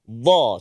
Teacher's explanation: Tepi lidah kita kena bahagian gigi geraham sebelah kiri atau kanan. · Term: huruf dad